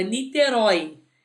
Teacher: Niterói a gente tem uma oxítona terminada em Oi como herói